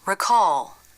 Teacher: still forward notice that the lips are relaxed the word recall the dark part is made with the back of the tongue as the jaw closes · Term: dark L